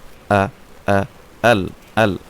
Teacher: আচ্ছা, এই প্রথম আয়াতের আমরা যদি মাখরাজ সহকারে দেখি তাহলে প্রথমটা হচ্ছে কি হামজা, প্রথম একদম হলকের শুরু থেকে উচ্চারণ হামজা